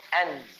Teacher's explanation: Jadi nak dengung dia, dengung pada makhraj. Huruf nun dengan ta makhraj dia sama. Langit-langit keras, sebelah atas, hampir dengan gigi hadapan. Jangan sentuh gigi.